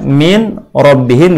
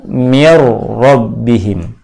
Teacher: Dua huruf ini digabungkan menjadi satu sehingga yang nampak adalah huruf yang kedua. Huruf yang kedua nampak dengan bunyi tasydid. Jadilah bunyi yang dihasilkan ditulisnya min rabbihim dibaca mir rabbihim. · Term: bacaan idgham